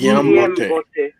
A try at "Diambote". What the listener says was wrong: This is Diambote, not Kiambote.